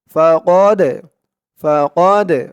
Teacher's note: এই দালটা কলকলার হরফ ধাক্কা দিয়ে বলতে হবে